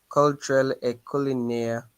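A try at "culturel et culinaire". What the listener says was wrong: why do you say call? A U is what sound? In the alphabet, the U is what in French?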